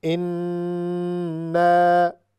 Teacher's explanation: یہاں پر نون غنہ ہے یعنی غنہ آ رہا ہے چونکہ نون پر شد ہے